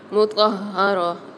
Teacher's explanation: مطہرہ ہا کے اوپر تشدید مشدد آ رہی، تو یہاں پر تواں کو ہا کے ساتھ ملا کے پڑھیں گے